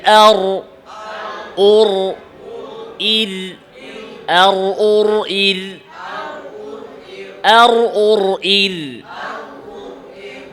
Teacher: এবার সুকুন দিয়ে আর, আওয়াজ সামান্য জারি।